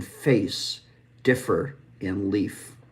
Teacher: And so with an F, we're using our bottom lip, our top tooth. We're creating that friction where the air is moving through and it's unvoiced. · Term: labial dental